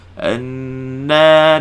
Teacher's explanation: Kena baca walau anna. Sini nun musyaddadah, wajibul gunnah, panjangkan dengung. Anna, dua harakat.